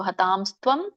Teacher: ಹತಾಂ ಅಲ್ಲಿ ನೋಡಿ ಅನುಸ್ವಾರ ಇದೆ, ತಾ ಆದ್ಮೇಲೆ ಮ ಹೇಳ್ಬೇಕು. ಹತಾಂಸ್ತ್ವಂ, ಹತಾನ್ ತ್ವಂ ಅಂತ ಬರುತ್ತೆ ಅದು.